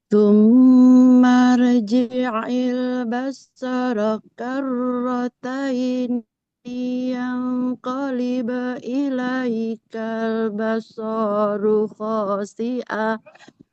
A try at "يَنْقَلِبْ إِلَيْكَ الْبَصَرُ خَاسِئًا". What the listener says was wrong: Basaru dibaca pendek ya, tidak dibaca panjang. Jadi ilaikal basaru khasi'a. Ilaikal basaru khasi'a.